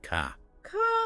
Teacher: many British accents are non rotic that R is softer almost silent so car might sound more like ca C wow I hear